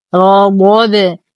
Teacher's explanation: لو وقفنا على الباء نقف بقلقلة كبرى ولو وصلنا نتشكل لدينا تنوين بعده حرف الواو فالحكم إدغام ناقص مع غنة أكمل ما تكون.